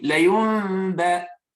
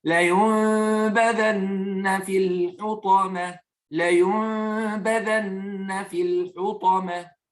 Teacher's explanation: Donc, la yumba, plutôt que la yumba, yumba, et on cache le mime, la yumba, et on fait un nasillement pour 2 unités de temps